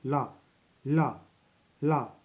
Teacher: ला पार्श्विक व्यंजन है, इसके उच्चारण में जिह्वा मसूड़ों को छूता है